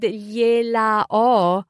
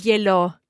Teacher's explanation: We can just drop the final a of gliela, have an apostrophe, and run it all together and say glielo.